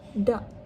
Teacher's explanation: Seterusnya dak maksudnya tidak, yang menggunakan dalam transkripsinya menggunakan K itu digantikan oleh hentian glotis